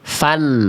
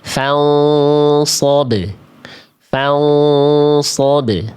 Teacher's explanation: jadi samar, bunyi n-nya udah nggak ada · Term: ikhfa hakiki